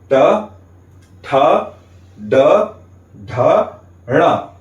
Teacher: हमारे अंदर से आती हुई वायु हमारे मुख में हमारी मूर्धा को स्पर्श करते हुए बाहर निकलती है। इसीलिए इन 5 वर्णों का उच्चारण स्थान हो गया मूर्धा और इनका वर्ग हो गया मूर्धन्य।